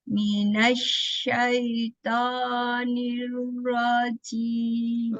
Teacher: Ya, taunya kurang tebal ya, kurang angkat pangkal lidah ya.